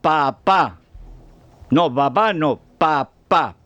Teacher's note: esto es muy sencillo es bilabial sorda